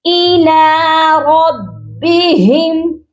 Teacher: یہاں پر را کو موٹا کریں گے کیونکہ را کے اوپر زبر ہے، را کے نیچے زیر ہو تو را باریک پڑھا جاتا ہے۔